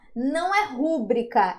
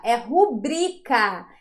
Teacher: Aqui também nós temos não rúbrica, mas rubrica. Nós temos uma paroxítona